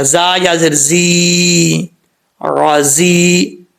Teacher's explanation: آگے زا ہے، سیٹی کے ساتھ پڑھا جائے گا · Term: سیٹی والا